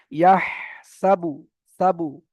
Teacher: এখানে দেখেন ইয়া হা জবর ইয়াহ, হাটা গলার ভিতর থেকে বের করতে হবে। হামজা হা আইন হা গলার মাঝখান থেকে হয়, তো এখানে হা গলার ভিতর থেকে।